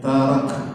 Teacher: Tarak itu harfanya hams atau berdesis